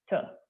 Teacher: hard T is where the front part of the tongue is pressed against the upper teeth and the back part of the tongue dips. So it's T.